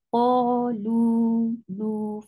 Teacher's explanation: for dhamma, circle your lips and make it 2 counts long. So qa is 2 counts long and lu is 2 counts long.